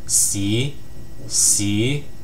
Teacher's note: it starts at pitch level three and ends at pitch level five. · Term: tone two